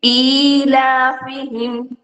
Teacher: ஈலாஃபிஹிம், ஈ 2 counts கொடுத்து லாக்கு 2 counts கொடுப்போம்